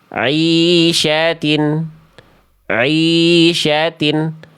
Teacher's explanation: Tidak masuk suaranya ke dalam rongga hidung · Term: ain harokat